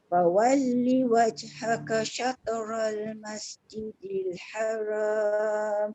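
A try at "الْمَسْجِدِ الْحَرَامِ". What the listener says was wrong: Haram, jangan haram, haram. Tebal.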